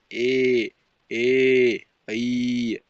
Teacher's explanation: ನ ಮೀ ಬರ್ತವೆ ಸೋ ಕಂಠ ತಾಲು ಅಂದ್ರೆ ಕಂಠ ಮತ್ತು ತಾಲು ದವಡೆ ಕಂಠ ಮತ್ತು ದವಡೆಯ ಮೂಲಕ ಹುಟ್ಟತಕ್ಕಂತ ಒಂದು ಅಕ್ಷರಗಳಿಗೆ ಕಂಠ ತಾಲು ಎಂದು ಕರೀತಾರೆ